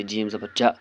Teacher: زبر کو جلدی پڑھنا ہے، تھوڑا بھی نہ کھینچنا ہے